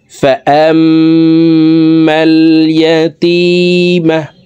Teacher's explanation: এই জবরওয়ালা হামজাটি তাসদিদওয়ালা মিমের সাথে 3 সেকেন্ড পরিমাণ গুন্নাহ করে ধরে রেখে পড়তে হবে নাকের বাসি থেকে গুন্নাহ করে পড়তে হবে এই গুন্নাহকে ওয়াজিব গুন্নাহ